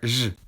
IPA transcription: ʐ